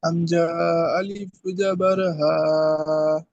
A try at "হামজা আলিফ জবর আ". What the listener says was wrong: আমার সোনা ভাইজান দুজন ভাই পড়েছে, আমিও বলে হামজা টান দিয়েছেন, হামজাতে টান হয় না, আলিফ জাবার আ হয়, আপনি হা হবে না। হামজা আলিফ জাবার আ,